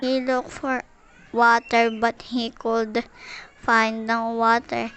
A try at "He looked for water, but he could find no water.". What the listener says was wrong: She said look instead of looked, and again cold instead of could.